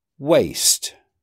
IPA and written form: weɪst (waste)